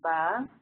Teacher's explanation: When you say ba, you should feel like a little soft kind of puff of air.